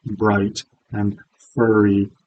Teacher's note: So as long as you're trying to represent the alveolar approximant, like we use in Canadian English, the R sound in bright and furry